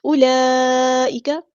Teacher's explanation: بڑی مد مد متصل، اور یہ 5 کاؤنٹ ہم نے اس کو لمبا کرنا ہے